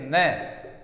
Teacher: यदि नय वर्ण के विषय में पूछें कि नय वर्ण से उच्चारण स्थानम किम, तो दंत प्लस नासिका